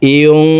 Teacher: নুন সেকেন্ডের পরে ইকফার হরফ সিন আসছে, এই কারণে এই নুন সেকেন্ডকে নাকের ভিতরে লুকাইয়া গুন্নার সহিত পড়ব। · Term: ইকফাহ গুন্না